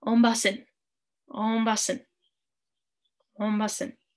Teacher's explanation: And there's a glottal stop there. So it's almost like a, not a silent N, but, you know, stop your N as it's coming out.